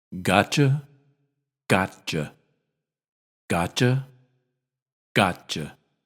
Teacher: when a form of U comes after T the t is pronounced but not released and the Y turns into CH